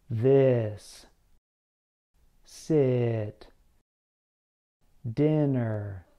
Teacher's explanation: your lips should be slightly apart and relaxed your tongue should be relaxed and somewhat high in the front of your mouth the back of your tongue touches the sides of your teeth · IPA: /I/